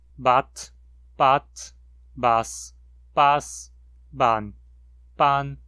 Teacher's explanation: as versões começando com a consoante vozeada tendem a ser pronunciadas com uma vogal com um tom mais baixo e as com uma consoante desvozeada com um tom mais alto